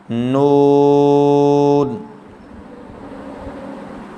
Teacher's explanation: زبان کی نوک اور مقابل کے تالو سے ادا ہوتا ہے